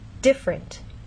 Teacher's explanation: most Americans say this word with two vowel sounds I and uh so in fast speech you get different so